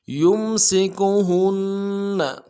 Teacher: ساکن کے ساتھ ملانا ہے، میم ساکن میں غنہ کریں گے، سین کو باریک ادا کریں گے، سین کی سیٹی باریک ہوگی